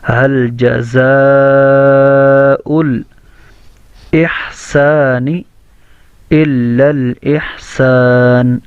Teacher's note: دونوں کو ہا ہی پڑھنا ہے. اور سین کے اندر سیٹی کی آواز کے ساتھ احسان کو پڑھنا ہے. اور نون اس میں ساکن ہے.